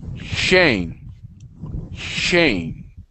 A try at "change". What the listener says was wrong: Okay, so with the CH sound, when we pronounce the CH sound, it's a little bit different, okay, than the SH sound, okay?